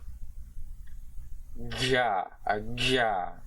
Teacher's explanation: This is the voiced palatal non-sibilant affricate consonant.